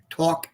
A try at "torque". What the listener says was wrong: Torque with an R. Pretend you're a pirate.